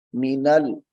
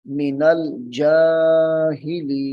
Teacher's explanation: منل نون کو لام کے ساتھ ملانا ہے